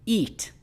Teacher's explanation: your tongue is going to be front and your jaw is going to be up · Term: front vowel sound e